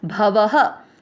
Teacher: स पूरा, स में अ मिक्स करना है स, मु के साथ आधा द समुद्र, और भ व दोनों अक्षर पूरे, अ मिक्स करेंगे भव। व में अ की मात्रा तो विसर्ग को पढ़ेंगे ह